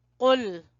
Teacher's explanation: قاف کو زبان کی جڑ سے ادا کریں گے، موٹا پڑھیں گے